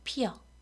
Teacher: 자, 쓸 때는 피어라고 쓰는데 발음을 피어라고 하는 거예요. 자, 그러면 원래는 어였는데 여라고 소리를 낸다는 거잖아요. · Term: 반모음 이가 첨가된